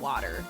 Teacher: when I say water, it's a D sound, right? It's not a T sound, it's water.